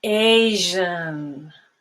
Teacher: The second one is Asian, and there's no stop whatsoever there. · a sound that's similar to SH, but you use your vocal cords. It's voiced. And it's spelled S between vowels.